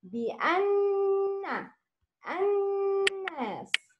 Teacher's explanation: Make غنى with two beats. Nasal sound. In نون مشدد.